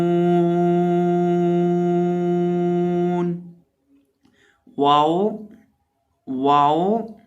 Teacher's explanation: वाओ को जब भी पढ़ें हमेशा इसको पढ़ते वक्त होंठों को गोल करके पढ़ा जाता है, होंठों को गुलाई में।